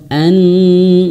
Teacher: nun bertasydid itu harus betul-betul ditahan dua harakat. Bahkan ada yang mengatakan dua harakatnya ini lebih daripada mad thobi'i.